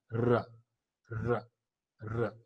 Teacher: And so it is called post-alveolar frictionless continuant. So R is a post-alveolar frictionless continuant sound. · It is not moving towards the palatal, but it is the dead end of your alveolar. And so it is called post-alveolar frictionless continuant.